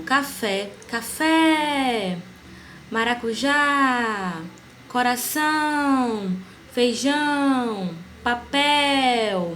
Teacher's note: Oxítona é a sílaba tônica que se localiza na última sílaba da palavra. Então, a sílaba que vai se destacar, que vai ser mais intensa, vai ser a última sílaba.